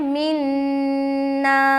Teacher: तो इस बात को गौर और ध्यान से सुने, जब भी अलिफ मद्दा पर करेंगे ना स्टॉप, जैसे यहाँ पर देख रहे हैं ना अलिफ मद्दा है, अलिफ खाली से पहले जबर, तो पूरा अलिफ मद्दा पढ़ते हुए स्टॉप होना है, ठीक है? तो यहाँ पर मिन करके स्टॉप करेंगे तो गलत हो जाएगा, पूरा पढ़ना है मिन्ना, ऐसा।